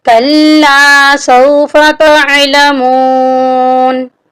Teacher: تا کو ہم عین کے ساتھ ملا کر پڑھیں گے۔ عین حروف حلقی ہے۔ اکثر لوگ اس کو پڑھتے ہیں تعلمون۔